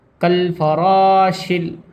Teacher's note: شین کو لام میں ملائیں گے کیونکہ لام کے اوپر ساکن بنا ہوا ہے